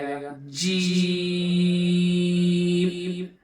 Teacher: اسی طرح جیم، زبان کا جو بیچ کا حصہ ہے، زبان کا جو بیچ ہے، اس زبان کے بیچ کو اسی کے اوپر لگائیں گے، تالو میں، اوپر کے تالو میں، تو یہ بھی آسانی سے نکل جائے گا، جیم۔